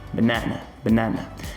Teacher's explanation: Então essa primeira sílaba e também a última, ambas levam o famoso chuá sound. Então, sempre que você conseguir identificar esse som, é muito provável que a sílaba dele seja uma sílaba átoma, seja uma sílaba fraca. · Percebe que a primeira sílaba, eu quase não pronuncio ela, ela é muito rapidinha quando eu vou pronunciar.